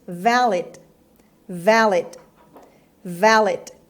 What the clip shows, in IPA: ˈvælɪd